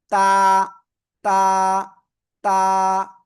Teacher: এই অক্ষরটা হবে জিহ্বার আগা। এই যে জিহ্বার আগা, উপরের দুই দাঁতের গোড়ায় লাগাবেন, ঠিক আছে? গোড়ায় লাগিয়ে আপনার এই অক্ষরটা সিম্পলি এক আলিফ টানিয়ে উচ্চারণ করতে হবে।